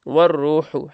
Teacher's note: والروح ہا کو باریک، را کو موٹا پڑھیں گے